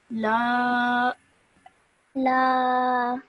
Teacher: Stretch that out for 2 seconds because of the alif madda.